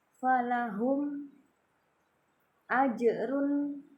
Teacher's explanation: Jadi mim sukunnya jangan didengungkan, dibaca jelas. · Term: idhar syafawi